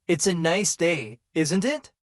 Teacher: the tone going up at the end tells the listener that you're asking a question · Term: intonation, raise our voice